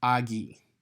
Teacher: the connecting vowel becomes an I, a long I. So it's agi.